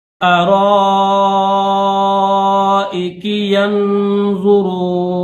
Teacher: را کے بعد الف مدہ ہے، اور الف مدہ کے اوپر جو ہے مد متصل ہے، بڑی مد ہے